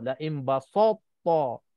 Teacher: Sebabnya ta tebal, sin jadi tebal juga. Ataupun ta ini pun terpengaruh juga.